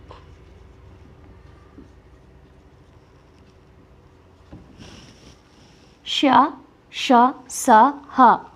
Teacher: గాలి ఊది పలికే అక్షరాలు వీటిని ఊష్మాలు అంటాము